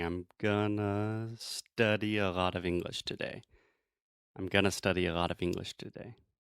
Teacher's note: all of the unstressed syllables naturally take this schwa sound. · the unstressed syllables take this kind of reduced sound, and then the more important words like English, today, study, those things we say a little bit louder, a little bit stronger